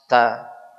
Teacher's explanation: huruf ta dia juga punya sifat hamas seperti huruf kaf. Tapi tidak boleh berlebihan. Seseorang mengucapkan ta, bukan ta.